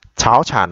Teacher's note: Tại sao chúng ta đọc là cháo chản mà chúng ta không đọc là chảo chản, bởi vì là hai chúng ta học cái ngữ pháp ấy, thì hai thanh ba đi liền với nhau thì thanh đầu tiên phải biến thành thanh hai